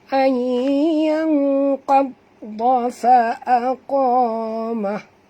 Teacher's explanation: Qadda, huruf qaf tebal dan huruf dad juga tebal. Dan huruf dad ada dua, tuan-tuan, sebab itu ada tasydid.